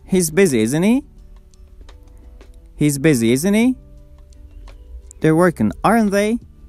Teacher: if we are chatting with someone, using tag questions, we can use falling intonation.